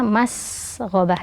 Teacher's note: sin sukun dialirkan suara dan nafasnya Mas gabah dan juga ada desis dari sifat huruf Sin kemudian · ada desis dari sifat huruf sin. Kemudian gho ya, huruf gho tebal karena berharokat fathah, masghobah ya.